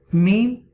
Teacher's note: pronounced from the dry part of both lips.